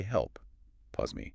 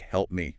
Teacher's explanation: So instead of opening the lips after the P, just to close them again for the M, the native speaker simply holds the lips closed. The P directly becomes the M. It sounds like help me.